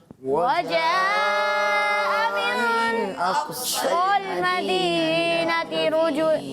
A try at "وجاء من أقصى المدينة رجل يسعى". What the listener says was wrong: رجول نہیں ہے رجل، را پر زبر ہے دوبارہ، اور رک بھی گئے تھے، رکنا نہیں ہے آپ نے، ٹھیک ہے؟